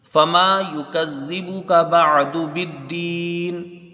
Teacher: بالدینی، آگے آیت ہے، آیت کے اوپر وقف مطلق کی علامت ہے، وقف کرنا بہتر ہے، جب وقف کریں گے تو وقف بالاسکان مد عارض، اب اس میں طول توسط قصر تینوں وجوہ ہوں گی